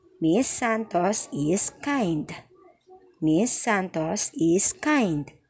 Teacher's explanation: This is a falling intonation. Why? Because this is a statement.